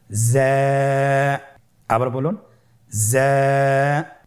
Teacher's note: জিহ্বার আগা সামনের নিচের 2 দাঁতের পেট ও আগার সঙ্গে লাগিয়ে উচ্চারিত হয়।